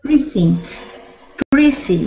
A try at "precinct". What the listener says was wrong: Good. Nice job. Good T sound at the very end as well.